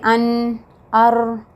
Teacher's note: When you say An, Ar, the tip of your tongue touches the upper palate, but in Ra there is a little vibration